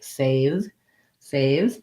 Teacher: make sure your a diphthong is long it glides from the tense a to the slightly more relaxed a